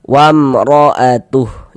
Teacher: Cara membacanya dibaca jelas. Jadi, bunyi mim soqon atau mim mati itu dibaca jelas. Kemudian tidak didengungkan, tidak dighunahkan, maka baca pendek saja. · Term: izhar syafawi, idhar syafawi